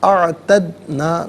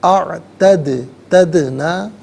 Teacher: دال ساکن ہے لیکن دال حرف قلقلہ ہے، تو ناظرین سکون کی صورت میں یہاں پر جب ہم ادائیگی کریں گے تو آواز لوٹتی بھی محسوس ہو